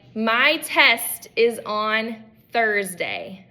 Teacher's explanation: the word Thursday? That's a quiet TH sound, okay, in that word